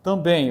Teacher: isso aqui é um ditongo nasal decrescente, ele vai caindo, vogal mais semivogal